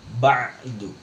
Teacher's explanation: Dan bukan ainnya dari hidung, tapi dari tenggorokan. Karena banyak juga orang ngucapin huruf ain, tapi justru tempat keluarnya dari khaysyumnya atau rongga hidung.